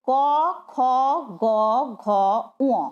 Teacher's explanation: পরিষ্কার করে উচ্চারণ করে কি দেখবে? কোথা থেকে আওয়াজগুলো আসছে? গলা থেকে। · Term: ক বর্গ